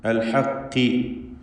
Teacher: ഖാഫ് കസ്റ ആയതുകൊണ്ട് കുറഞ്ഞ തഫ്ഖീമാണ് അതിന് വരിക. അത് ഹക്കി എന്ന് കാഫ് പോലെ ഉച്ചരിക്കരുത്. ഖാഫിൻ്റെ മഖ്റജിൽ നിന്ന് തന്നെ ഉച്ചരിക്കണം.